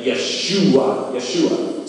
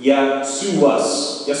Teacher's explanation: they didn't have the sh sound in like Yeshua